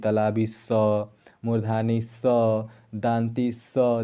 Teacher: जब हम लोग इसको स बोलते हैं ना तो स में सिसकारी आ रहा है यानी ऊष्मा निकल रहा है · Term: उष्म व्यंजन